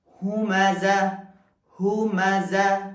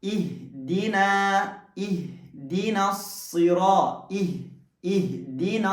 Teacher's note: کچھ حروف جو ہیں وہ انتہائی حلق سے، یعنی حلق کی جو آخری، اس گلے کی جو آخری قسم ہے، آخری حصہ ہے، یہاں سے ادا ہوتے ہیں۔ اور انتہائی حلق سے ادا ہونے والے حروف جو ہیں وہ حمزہ اور ہا ہیں۔ عموماً سینے کی طرف جو حلق کا حصہ ہے اس کو انتہائی حلق یعنی سب سے آخری حصہ کہا جاتا ہے۔